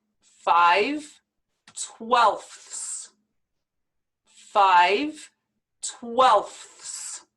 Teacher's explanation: we have to pronounce the f sound the th sound and the s sound all together very quickly